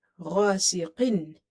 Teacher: Ghain is heavy, it's from the musta'aliya letters here.